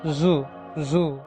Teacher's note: അൽവിയോള, tip of the tongue and teeth റിച്ച് ആർ involved. ഫ്രിക്കേറ്റീവ്, air passes through the narrow space between them.